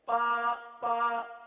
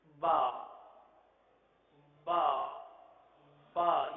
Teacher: با کی بجتی ہوئی آواز، اور یہ صرف تر حصے سے ہی ادا ہو سکتی ہے، خشک حصے سے ادا نہیں ہو سکتی.